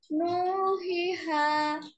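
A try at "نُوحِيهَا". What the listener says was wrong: হ্যাঁ, আপনার একটু দম এখানে অনেকটাই দম চলে যাচ্ছে।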